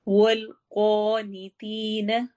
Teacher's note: والقانتین، قوف موٹا ہے، قانتی میں اگین یا مدہ ہو رہی ہے۔